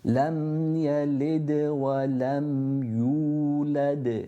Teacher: Lam yalid, ya from the middle of the tongue, yalid. Then the qalqala here, because the dal has a sukoon on it, qalqala meaning that we echo that sound.